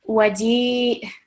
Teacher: And if we're pausing, we know a letter with fatha takes sukoon. Waji', slight jerk at the end because of the hamza with a sukoon